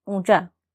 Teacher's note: आप जब ऊंचा शब्द बोलेंगे तो आपको अपनी नाक में भी कंपन महसूस होगा, यानी कि ऊंचा शब्द को बोलते हुए हम अपने नाक का भी इस्तेमाल कर रहे हैं। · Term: अनुनासिक वर्ण